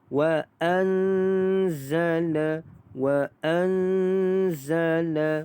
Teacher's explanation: di sini kita dengungkan dengan kadar 2 harakat kerana nun mati bertemu dengan huruf zai. 2 harakat.